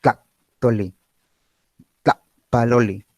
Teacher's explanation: Es un cierre glotal absoluto, breve, no hay paso del aire. Si yo comparo este sonido con cuando ustedes desean vomitar, hacen eso. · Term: saltillo